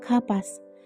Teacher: Kapas cara pengucapannya yaitu dengan huruf P ditahan.